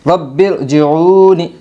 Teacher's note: برن رب ارجعون، را با زبر ربا، را زیر بر، رب، جیم زیر جی، عین واو پیش عو، جعو، نون زینی، جعونی، رائے ساکنہ پر ہوگی، رائے ساکنہ دوسرے کلمے میں ہے، رائے ساکنہ سے پہلے زیر ہے اس لیے رائے ساکنہ پر ہوگی۔ رب ارجعون، امر تابو، حمزہ زبر آ، میم را زیر مر، امر، تا الف زبر تا، با واو پیش بو، تابو، رائے ساکنہ پر ہوگی، رائے ساکنہ دوسرے کلمے میں ہے اور رائے ساکنہ سے پہلے زیر ہے اس لیے رائے ساکنہ پر ہوگی۔